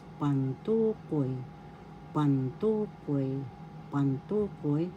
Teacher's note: First syllable pan, second syllable tu, third syllable koy. The second syllable has the accent